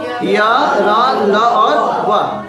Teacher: इनको अंतस्थ बोलते हैं क्योंकि इनका उच्चारण स्वर और व्यंजन के बीच जैसा होता है।